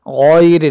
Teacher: الغین کو موٹا کر کے پڑھیں گے ہم، غین کے بعد آنے والی جو را ہے اس کو ہم باریک پڑھیں گے